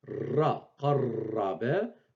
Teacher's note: Ra, je la double, donc c'est le R roulé. Ce n'est pas le R grasseyé du français, c'est plutôt le R roulé de l'arabe.